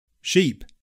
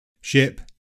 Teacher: The only significant difference between the pronunciation of these two words is the tongue being further forward and the jaw more close in sheep. Bleh. Whereas the tongue is more central and the jaw slightly lower in ship